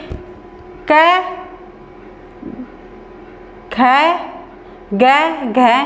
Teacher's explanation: क में कम हवा निकली, ख में थोड़ी सी और अधिक निकली, फिर ग में कम निकली, फिर घ में और अधिक निकली